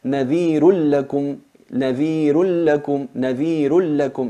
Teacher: Nadhirun lakum se convierte en una lam con shadda o ra con shadda. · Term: sin gunna